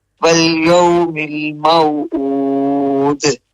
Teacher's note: پھر اود کو لمبا کرتے ہوئے دال پہ پھر کلکلا۔